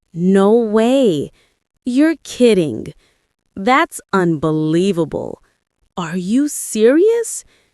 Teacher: Feel the rise in your voice when you express surprise.